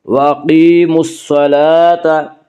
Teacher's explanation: یا مدہ کو ایک الف کے برابر کھینچ کر پڑھیں گے۔